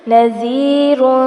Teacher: زال کو نرمی سے پڑھا جائے گا، پیش تنوین پر اخفا ہوگا